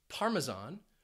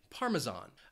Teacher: cheese from Italy parmesan it has three syllables and the stress you might hear it on that first syllable parmesan or you could hear it on that third syllable